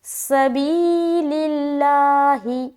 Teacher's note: بی میں ہم یا مدہ کریں گے تو تھوڑا کھینچیں گے جس کی مقدار ہے 1 الف۔ سبیل اللہ، لا میں بھی کھینچیں گے کیونکہ اس کے اوپر کھڑا زبر ہے۔ · سین کی آواز سیٹی نما ہونی چاہیے